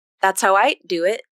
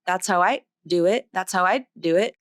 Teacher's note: My tongue tip came up, but my voicing stopped, so it turned it into a T. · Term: glottal stop